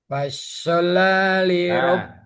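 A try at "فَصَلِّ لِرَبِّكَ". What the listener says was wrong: Fasoli. Bukan pas, shotnya enggak tasjid ya. Fasol, lamnya yang double.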